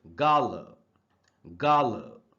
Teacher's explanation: Last वाले ए का उच्चारण आ नहीं, आधा अ होता है। तो आप देखेंगे अगर, तो यहाँ ल के बाद ब्रैकेट में आधा अ लिखा हुआ है, यानी इसको ला नहीं ल पढ़ना है।